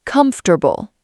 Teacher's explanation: The word comfortable. Many people stress this wrong. Comfortable. 3 syllables, not 4.